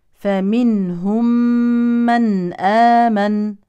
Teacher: هذه النون الساكنه يليها هاء يعني اظه اظهار حلقي